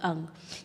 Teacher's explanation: ये जो पांचवा अक्षर है अंग इसमें कंठ का भी उपयोग होता है और नाक का भी उपयोग होता है।